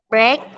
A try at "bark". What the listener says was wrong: Bacanya bark. Bark. Bark the dog. Bukan break. Bark the dog.